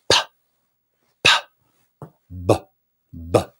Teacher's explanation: the vibration comes first the lips kind of stop it and then release it